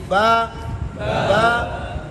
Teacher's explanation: با کے اندر یہ دونوں ہونٹ سختی سے ملیں گے